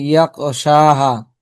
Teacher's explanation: আপনার এখানে খ উচ্চারণ হচ্ছে না, আপনার বলতেছেন ইয়াকশাহা, কবের মতো হয়ে যাচ্ছে। ইয়া খ যাবে ইয়াখ, মান ইয়াখশাহা।